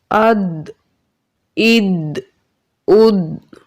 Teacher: دال حروف قلقلہ ہے اور ساکن ہے، اس میں قلقلہ خوب ظاہر ہوگا۔